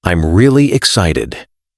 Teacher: with rising and falling intonation, showing energy